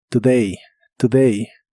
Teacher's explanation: La O de esta palabra suena como una U muy suave.